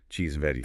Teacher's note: The word and just gets crushed, becomes in.